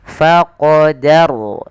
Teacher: dia menebalkan huruf ro-nya, tapi danya tetap tipis. Faqadaru ya, teman-teman, kita tebalkan. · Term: ro tafkhim